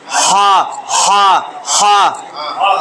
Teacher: হলকের মধ্যখানে একটু চাপ দিয়া আইন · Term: 2 নম্বর মাখরাজ